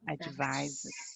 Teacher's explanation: this S actually sounds like a Z It's pronounced like a Z.